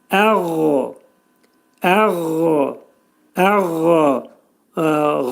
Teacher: Ə, ə, ə şəklində deyib, demək ki, məxrəcini çıxarırıq. Qayn hərfi, bu hərfin məxrəci boğazın yuxarı hissəsindədir